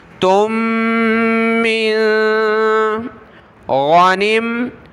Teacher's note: غین زبر غا، نون میم زیر نم، نون کو میم کے ساتھ ملایا، نم، غانم، غانم تم من، تا کے بعد دو میم ہیں، پہلی ساکن اس کو چھوڑ دیں گے، دوسری میم جس کے اوپر یہ تشدید ہے تو اس کے ساتھ ہم نے تا کو ملانا ہے، ناک میں آواز پیدا کریں گے، پھر اس میم کو آگے نون ساکن کے ساتھ ملا دیں گے۔